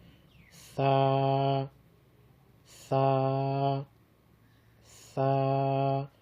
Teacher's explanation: زبان کی نوک اور اوپر والے دونوں دانتوں کا سرا، اس سے ثا ادا ہوتی ہے